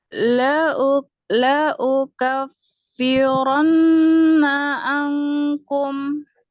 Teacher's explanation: Jadi kurang panjang nun bertasdid. Sedangkan nun bertasdid ini lebih panjang ya tempo gunahnya dibanding yang ikhfa